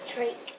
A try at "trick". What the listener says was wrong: What's your vowel sound? Don't put a ch sound. What does CH say?